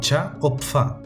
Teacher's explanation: Las africadas, que no son más que una oclusiva y una fricativa a la vez